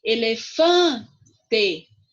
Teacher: O fã é a sílaba mais forte, é a sílaba tônica.